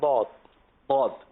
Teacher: ضاد کا جو مخرج ہے وہ ہے زبان کی کروٹ. ہماری جو زبان ہے پوری, یہ زبان کی ایسی شیپ ہے, صحیح نا, شکل ہے زبان کی.